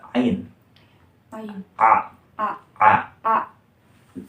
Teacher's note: seperti di tenggorokan tetapi tidak menempel akar lidah